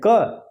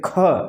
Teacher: जब हम कहते हैं क, कम वायु निकले, जब कहते हैं ख, पूरी वायु बाहर निकल गई